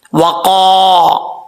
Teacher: قاف حروف مصالحہ میں سے ہے، پر پڑھا جائے گا. قاف کے آگے الف ہے، ایک الف کی مقدار لمبا کریں گے